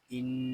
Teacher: یہاں نون مشدد ہے اس کو غننے کے ساتھ پڑھیں گے نون مشدد میں ہمیشہ غنہ ہوتا ہے